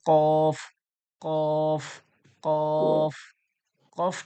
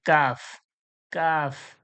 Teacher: কফ টা মোটা করে হবে আর কাফটা কি হবে পাতলা করে হবে বুঝতে পারছেন কাফ কফ কাফ কফ কাফ কফ এই পার্থক্যটা যেন